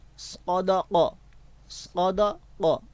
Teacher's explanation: پہلا حرف پر پڑھنے والا ہے، دوسرا حرف باریک پڑھنے والا ہے اور اگلا قاف جو ہے وہ بھی پر پڑھنے والا ہے اور موٹا پڑھنے والا ہے، ٹھیک ہے.